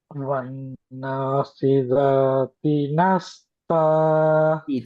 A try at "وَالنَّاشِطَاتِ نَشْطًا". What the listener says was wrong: தீ சவுண்ட் வரணும் படிச்சிருக்கீங்க. தான் வரல. வன்னாசி தாண்டு வராது. நான் என்ன சொன்னேன், ரெண்டு கன்னங்கள் ரெண்டும் குவியலாகணும் அந்த எழுத்தை உச்சரிக்க முன்னுக்கு. தாண்டு சில பேருக்குள்ள கன்னங்கள் குவியல வருது இல்லையே. பாத்தி ஓதலுக்குள்ள போற நேரத்துல மறப்படாது.